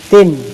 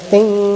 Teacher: Dia jadi tin, T-I-N. Tapi kalau dia selain daripada izhar ataupun ikhfa, dia jadi ting, tambah G sikit